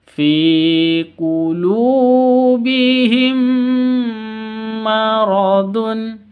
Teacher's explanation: cara bacanya idgham mimi itu dibaca dengung jadi seperti ghunnah seperti idgham bhunnah seperti ikhfa sama-sama dibaca dengung